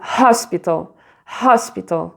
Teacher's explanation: tu l'écris avec un H, mais le H est prononcé, donc tu l'aspires. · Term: H aspiré